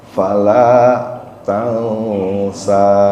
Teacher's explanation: Di situ ada ikhfa ya, tansa. Kayak ada huruf mendengung.